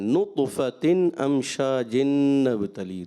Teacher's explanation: نطفة طاء میں کلکلا کرنا ہے